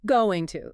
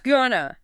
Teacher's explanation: your tongue has to start at the back of your mouth for the hard g, then it moves to the nasal ang, and then it has to jump all the way to the front of your teeth for the T. Gone to. There's a lot of gymnastics for a fraction of a second.